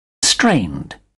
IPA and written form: streɪnd (strained)